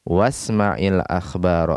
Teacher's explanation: Karena hamzah wasal di tengah-tengah pembicaraan tidak dibaca. Jadi was langsung.